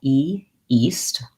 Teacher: thinking of that as being a tense high front vowel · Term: long E vowel